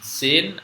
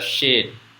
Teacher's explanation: Kalau sin itu ya kita mengucap s biasa sin gitu ya. Kalau shin itu dimonyongkan ya